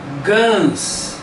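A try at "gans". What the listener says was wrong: Esquece o G em português. Vai.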